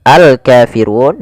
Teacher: Kemudian pada lafal alkafirun di sini ada alif lam qamariah, yaitu alif lam yang ditulis alif lam yang ditulis dan dibaca lamnya dengan jelas maka dia namanya alif lam qamariyah. Kemudian pelafal kafirun ada bacaan mad thbi'i yaitu terjadi apabila ada fathah bertemu dengan huruf alif.